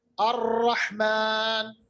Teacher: रा की आवाज में ये लकनत है, यानी रिपीटिशन है, थरथराहट है रा की आवाज में। खुसूसन ये तब जाहिर होती है जब रा साकिन या तशदीद में हो, जैसे हम पढ़ते हैं अर्रहमान। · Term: सिफत तकरीर